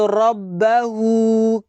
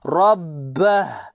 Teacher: Kena matikan huruf ha. Maksudnya kita tidak baca dia dengan panjang.